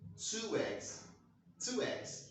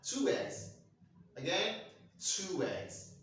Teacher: So the ghost sound you're going to use is pronounced w. W. Okay?